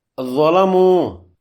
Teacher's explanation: واو مجزوم سے پہلے میم پر پیش ہے، دو حرکات لمبا کریں گے، یہ واو مدہ ہے